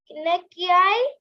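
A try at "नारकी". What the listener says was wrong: Narki, not NAARKI. Okay, Narki.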